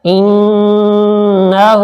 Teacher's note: نون کے اوپر شد ہے، یہاں پر ہم کچھ دیر ناک سے آواز نکالیں گے